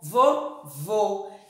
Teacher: a segunda sílaba, a vogal O, recebe o acento circunflexo. O som fechado.